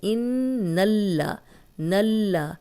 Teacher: ان نون پہ شد آ گئی ہے تو ہم غنہ کریں گے۔ غنہ ناک میں تھوڑی دیر آواز کے ٹھہرانے کو کہتے ہیں۔